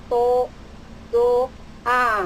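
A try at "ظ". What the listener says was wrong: Zo yang huruf sebelum terakhir. Zo ujung lidah.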